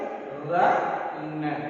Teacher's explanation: நம்ம நாக்கோட நுனியை மேல்வாய் அன்னத்தின் முன்பகுதியை தொடுவதால் ர ந இந்த 2 எழுத்துக்கள் கிடைக்கின்றன.